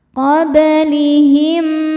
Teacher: Kemudian ada hukum qalqalah sugro karena ada ba dengan sukun asli dan ada di tengah-tengah bacaan. Cara bacanya dipantulkan bnya dengan pantulan yang kecil.